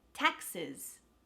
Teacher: the a is the stressed syllable so the e s at the end becomes a schwa sound